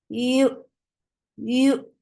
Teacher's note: You are lifting your tongue up towards palate, but it's not touching it. That is making ya very soft. It's a very soft touch, like when people does not have strength in their tongue, they say here, here, here, just like that.